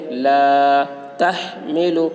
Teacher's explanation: تو سب سے اوپر صلے ہے، سب سے اوپر جو ہے اس علامت پر عمل کرنا ہے، اور صلے میں یہاں پر ملا کر پڑھنا بہتر ہے. الف سے پہلے زبر ہے، الف مدہ ہوا، اس لیے الف مدہ کو ایک الف کے برابر کھینچ کر پڑھیں گے